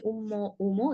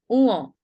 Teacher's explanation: উম্ম বা উম নয়, এখানে ম এর চাপটার বাদ দিয়ে দিতে হবে। ম আসবে না। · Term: নাসিক্য ধ্বনি